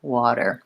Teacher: My tongue just lifts up into that T and D position gently, quickly, and comes right back down. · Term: flap